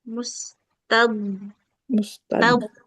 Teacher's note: dotnya dia jangan sampai tekanannya kayak dal ya. Mustad Mustad dia di tepi lidah.